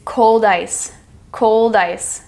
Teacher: The D and the I form and it blends into the sound of one word.